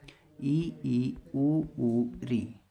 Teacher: समृत स्वर मुख द्वार बहुत कम खुलता है या लगभग बंद ही रहता है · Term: समृद्ध स्वर